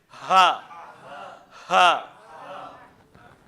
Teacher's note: یہ نرمی والا ہا نہیں ہے، بلکہ اس کو سینے سے ادا کرنا ہے۔ حلق سے بھی اس کا تعلق ہے، زیادہ اس کی جو آواز ہے وہ سینے سے نکلتی ہے۔